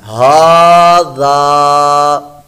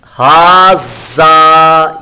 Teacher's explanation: اس کو ہم نے لمبا کر کے پڑھنا ہے، ہا ذا۔ زال کی جگہ زا کی آواز نہ آئے ، ہا زا، یہ غلط ہے، زا کی آواز آئی